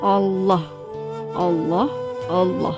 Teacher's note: membaca huruf lam pada lafal Allah itu dengan tebal, yaitu dengan mengangkat semua lidah dan menekankannya ke langit-langit atas sambil menekankan suara yang cukup kuat. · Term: lam tafkhim